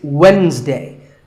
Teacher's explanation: the d is silent